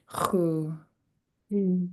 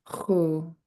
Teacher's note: just let the sound flow out. You're not stopping the air at all. And so just repeat after me. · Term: underlined X